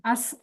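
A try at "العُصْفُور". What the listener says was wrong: Bacanya ainnya didomahkan, Uhti. Al-us, usfur.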